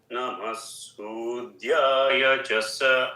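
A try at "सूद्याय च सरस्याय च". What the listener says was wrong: No, you're dropping the cha another time. Hold the control. Sudyaya cha sa. No, yeah, Sudyaya cha. That is what you're doing. Sudyaya cha sa. Ya cha sa. So don't drop the cha.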